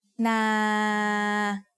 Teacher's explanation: This is a live syllable because if I wanted to, I could extend the length of the word and say nah.